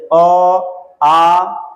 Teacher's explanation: अ और आ जो है इसका उच्चारण कंठ से होता है, जैसे अ, आ, ये सब कंठ से हो रहा है।